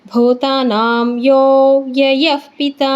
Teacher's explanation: ಯೋ ಆದಮೇಲೆ ನಮಗೆ ಪ್ಲುತ ಸ್ವರ ಇದೆ, ಯೋ ಅಂತ ದೀರ್ಘ ಮಾಡಬೇಕು.